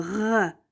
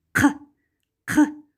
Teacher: Помните звук «г», тоже заднеязычный звук, но он произносится долго, «г», а звук «к» кратко. Воздух мгновенно вырывается.